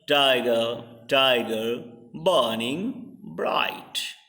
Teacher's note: in burning you find just burn is stressed, ing is unstressed · we find that tie is the stressed and gur is unstressed